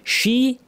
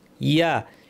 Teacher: মুসাল্লামাতুল্লা শিয়াতা, শিন এবং ইয়া কমপ্লিট করতে হবে, দুইটাই জিহ্বা মাঝখান থেকে। শি, শিনে বাতাস আছে, ইয়াতে বাতাস নাই।